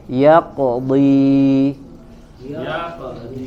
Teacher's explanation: terdengar sedikit kurang jelas daripada qalqalah yang ada berada di waqaf, karena setelah qalqalah ada huruf lainnya harus dibaca, sehingga bunyi qalqalahnya tidak sejelas ketika dia berada di akhir ayat atau ketika dia berada pada kondisi waqaf.